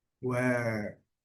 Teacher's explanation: quando nós trazemos para a pronúncia americana, ele vai ter o R adicionado